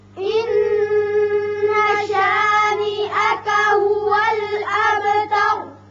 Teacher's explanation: ان نون مشدد ہے، غنہ ہوگا. هو الاب با ساکن ہے، صفت قلقلہ ادا کریں گے.